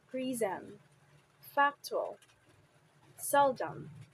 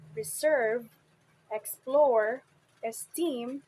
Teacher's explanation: the words prism, factual, seldom receive the primary stress on the first syllable, while the words reserve, explore, esteem receive the primary stress on the second syllable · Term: bisyllabic stress, biselabic stress